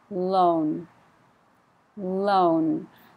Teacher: be very careful to put the N on the end because if you don't it sounds like low like high low I need to hear the end low loan